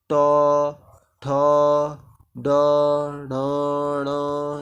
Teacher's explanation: ट, ठ, ड, ढ, ण, ये सभी मूर्धा से होते हैं।